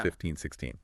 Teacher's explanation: The teen numbers, 13 through 19, they usually have the stress on the end